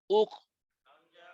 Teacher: একবারে ছোট্ট বাতাস, ফার মতো বড় বাতাস না, কাফের মধ্যে ছোট্ট বাতাস হবে। দুইটা হরফ শক্ত আছে, কাফ আর তা, এই দুইটার মধ্যে বাতাস একবারে ছোট্ট করে বের হবে।